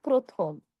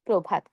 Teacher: যকৃত প্রথম এই নিয়ম আরেকবার ওকে ওকে দেখুন শব্দের শুরুতে যদি অধনি থাকে যেমন ধরুন প একটি অধনি। আর সেই অধ্নির সঙ্গে যদি রফলা থাকে তাহলে আমরা সেখানে অ এর উচ্চারণটা ও এর মত করে বলব।